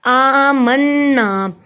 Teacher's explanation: من پہ گنا ہوا کیونکہ نون پہ شد ہے · حمزہ کے اوپر کھڑی زبر ہے اس لیے الف کے برابر لمبا ہوا